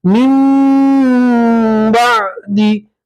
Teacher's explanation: तवल्लैतुम मिन बादी, यहाँ नून साकिन का कल्ब का कायदा है कि नून साकिन के बाद बा आती है तो नून साकिन को मीम से बदलेंगे, तो हम इस मीम को इस मीम से मिलाएंगे, नून नहीं पढ़ेंगे, मीम को मीम से मिलाएंगे और इख्फा के साथ गुन्ना भी करेंगे।